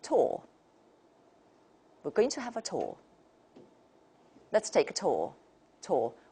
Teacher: in the British pronunciation, there is a tendency to turn this into or.